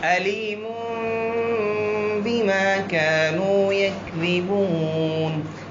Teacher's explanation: تو اس قاعدے میں نون ساکن یا تنوین کس میں تبدیل ہوا ہے؟ میم میں تبدیل ہوا ہے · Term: اقلاب